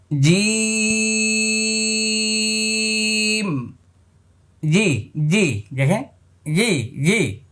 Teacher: আমি আবার বলছি, জিম, জি জি, দেখে জি জি, এই যে জিব্বার মধ্যখান উপরে তালুর সঙ্গে লেগে যাচ্ছে, এটা 6 নম্বর মাখরাজ। জিব্বার মধ্যখান তার বরাবর উপরে তালুর সঙ্গে লাগাইয়া উচ্চারিত হবে।